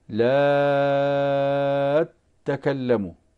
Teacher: وإضافة إلى هذا لنا حكم مع لا تكلم، لا تكلم، فالبزي رحمه الله تعالى يشدد مثل هذه التاء تكلم التي تلي هذا الحرف حرف النفي مثلا، فكيف يقرأها؟ هكذا بالطول بالإشباع من قبيل اللازم من باب اللازم، فيقرأ كذا لا تكلم. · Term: مد لازم كلمي مثقل